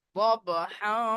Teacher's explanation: যদি ধরে পড়েন দবহা, নাকে তুলে এক আলিফ গুণনা করতে হবে